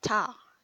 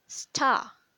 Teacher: You will get more puff of air when you say ta, and you won't really get a puff of air at the word star. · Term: aspirated t